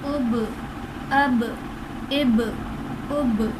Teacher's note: با حرف قلقلہ ساکن ہے اس لیے یہاں پر ہم نے قلقلہ خوب ظاہر کیا ہے